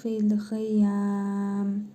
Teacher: Əgər davam edəriksə oxumağa fil xiyəmi deyə oxuyuruq. Əgər burada durarıqsa o zaman fil xiyəm deyə mim hərfini cəzmli m kimi tələffüz edirik.